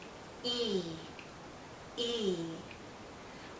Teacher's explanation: our lips are very spread very pulled out and this is a long vowel sound so think of your lips being pulled out like the vowel